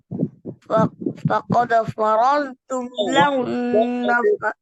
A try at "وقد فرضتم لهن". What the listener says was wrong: وقد واو है शुरू में.